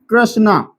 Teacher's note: जैसे अगर हम इसको र र भी नहीं बोला जाएगा और यह री भी नहीं बोला जाएगा। यह र प्लस ई ई में थोड़ा कम इ है जो उसमें थोड़ा कम समय लगता है। जैसे हम जैसे मैंने शब्द लिखा यहां पे कृष्णा तो थोड़ा इसको होठों को मिलाते हुए नहीं थोड़ा खुले रखते हुए कृष्णा।